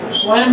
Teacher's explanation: तत्सम शब्द की अपनी प्रवृत्ति होती है कि जैसे एवं लिखते हैं, स्वयं लिखते हैं, तो इसमें हल्का मकार का उच्चारण आएगा